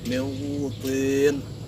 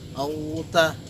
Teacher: cara membacanya itu dengan menyamarkan, tapi huruf N-nya itu masih tersisa. Jadi masih tersisa sedikit huruf N-nya. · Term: aqrab